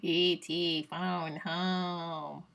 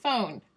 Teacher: to make E.T. sounds, I have to be more nasal